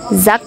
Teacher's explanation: Contoh kedua, kata bahasa Belanda zak, kantong diucapkan zak dengan K velar tidak bersuara